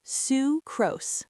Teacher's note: pronounced sucrose, again with a long oo sound, like in Sue